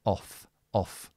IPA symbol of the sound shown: ɒf